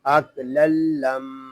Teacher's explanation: یہاں میم مشدد ہے، اس کو غنے کے ساتھ پڑھیں گے